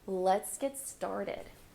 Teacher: Notice how I'm stressing started.